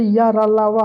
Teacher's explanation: या, रा, ला, वा के उच्चारण में जीभ, ताल, दंत, ओंठ के परस्पर सटने के उच्चरित होते हैं, किंतु कहीं भी पूर्ण स्पर्श नहीं होता, अतः ये चारों अंतस्थ व्यंजन कहलाते हैं।